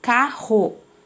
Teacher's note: os dois erres eles vão ter o som do r forte